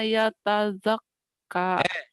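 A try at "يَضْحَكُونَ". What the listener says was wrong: Yadhakun. Yadhakun nggak ada taknya.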